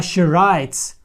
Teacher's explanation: ми тут замість з вимовили звук с і приглушили оцей звук д у нас получилося тут с а тут ти відповідно У нас